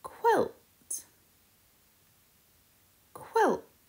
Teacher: the qu sound is when we put our lips together and let out a little puff of air